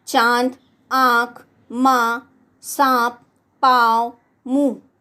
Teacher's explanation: ऐसे स्वर नाक और मुंह दोनों से बोले जाने के कारण अनुनासिक कहलाते हैं